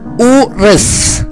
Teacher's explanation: Şapkalı U Türkçedeki U sesine benzer bir ses veriyor. Ancak biraz daha uzatıyoruz. Uzun yani. Urız.